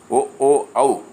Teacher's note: కంఠోస్యములు కంఠము పెదవుల నుండి పుట్టినవి